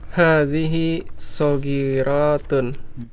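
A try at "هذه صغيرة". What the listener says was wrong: saghiratun, ro-nya pendek.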